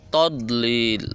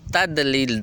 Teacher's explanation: دال جو ہے یہ آپ کی زبان کا آگے والا سرا جو ہے یہ اوپر والے دانتوں سے لگے گا، تو پھر دال کی آواز نکلے گی۔